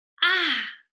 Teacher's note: Ah, ah, last tone, going down.